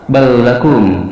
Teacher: Huruf 'lam' menyatu dengan huruf 'ra' atau 'lam' yang mengikutinya. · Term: digabungkan